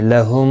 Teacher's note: میم ساکن کے بعد دوسرا میم آیا ہے، یہاں پر ادغام شفوی ہوگا، گنہ کے ساتھ پڑھیں گے